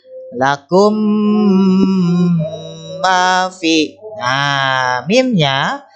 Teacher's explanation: diingatkan saja mim bertemu mim ya cara membacanya juga Sama ya dibacanya nih mimnya rangkap atau di tasydid kan dengan cara mendengung dibacanya lama ya masukkan ke hidung dengungnya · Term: idgham mimi